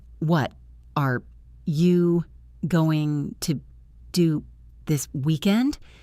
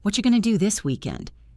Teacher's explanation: What are you becomes whatcha. Going to becomes gonna.